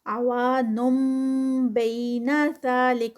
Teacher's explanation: عوان بین ذالک، یہاں پر نون ساکنہ اور اس کے بعد با آ گیا ہے تو با جیسے یہ ہم نے دیکھا تو یہاں پر اقلاب کا رول اپلائی ہوگا، نون ساکنہ کا رول اقلاب، اور یہ جو نن نہیں ہوگا بلکہ یہاں پر میم کی ساؤنڈ آئے گی۔ عوانم بین ذالک، اور اقلاب بھی 2 کاؤنٹس کا ہوتا ہے، زا 2 کاؤنٹس کا، لک آگے کاف کا ہمس۔